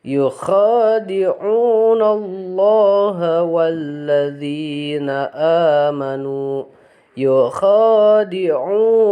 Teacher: khadi'u sama-sama panjang ya. Kha panjang, di'u panjang. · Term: mad tabi'i